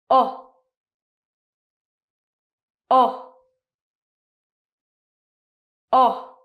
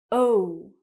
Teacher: when I say it, my mouth is round, it moves, and it gets smaller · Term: diphthong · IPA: /əʊ/